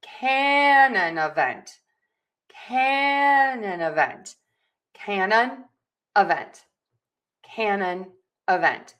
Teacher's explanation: we are going to stress syllable number 1, can. And we are going to stress syllable number 4, vent.